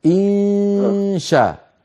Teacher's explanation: لما تخفي النون عند الشين، اذهب هيئ فمك على مخرج الشين